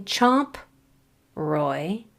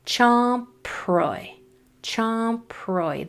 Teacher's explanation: So instead of saying chomp, roy, blend the PR together using a lot of air with that P. So it comes out as chomproy. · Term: PR blend